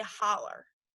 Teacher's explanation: Another example of something that changes is that words that normally end with the O vowel, and like for instance, hollow, people who speak Appalachian English would change that to either a stressed or an unstressed ER sound. So instead of saying hollow, they'd say holler.